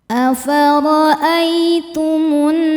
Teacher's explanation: Sebab ada alif lam yang menghadapi huruf syamsiyah yaitu nun. Cara bacanya alif lam tidak dibaca masuk langsung ke nun atau disebut dengan idgham syamsi. · Cara bacanya berdengung. Tahan dengungannya kurang lebih dua harakat. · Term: dhunah musyaddadah, gunnah musyaddadah